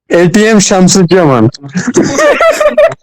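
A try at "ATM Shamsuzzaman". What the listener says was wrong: শুনেন শুনেন, এটা যদি ইংরেজরা যদি এটা উচ্চারণ করে, ব্রিটিশ কিংবা আমেরিকানরা যদি উচ্চারণ করে, তাহলে কি উচ্চারণ করবে জানেন? এইটিএম উচ্চারণ করবে। এরা কখনোই হয় টিএম শামসুজ্জামান উচ্চারণ করবে না, এই এইটিএম এ করবে, এটা হচ্ছে acronym. সো এইটিএম শামসুজ্জামান, today our keynote speaker is ATM Shamsujjaman and we are welcoming him on the stage.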